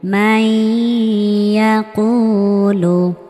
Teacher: নুন সাকিনের পরে ইদগামে বা গুন্নাহর চারটি হরফের মধ্যে ইয়া আসার কারণে এখানে গুন্নাহ সহ মিলিয়ে পড়েছি।